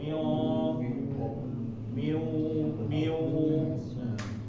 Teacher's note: ini adalah getaran di hidung ya getaran di hidung eh ketika mengucapkannya